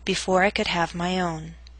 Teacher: voice must reach a lower note on own compared to Industry own must reach a lower pitch to Signal the end of the statement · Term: falling intonation